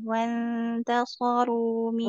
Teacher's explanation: ikhfanya ditahan lebih lama